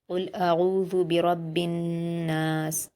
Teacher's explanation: सीन पर जज़्म देकर वक्फ कर देंगे।